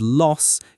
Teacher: The vowel sound in the word loss can be tricky for learners. In a standard British accent, it's a short open o sound. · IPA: /ɒ/